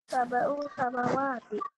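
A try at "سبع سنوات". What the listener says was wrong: Bukan samawat. Kalau samawat itu artinya langit-langit. Yang benar sana pakai nun. Sanawati.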